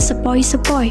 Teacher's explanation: Diftong naik menutup maju adalah oi, contohnya angin sepoi-sepoi